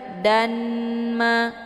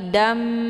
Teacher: dengan Idam bunah atau juga disebut dengan Idgham maalunah cara bacanya harakat tanwin fathah dimasukkan ataupun dileburkan ke dalam huruf mim dengan cara ditekan kemudian ditahan lebih kurang dua kali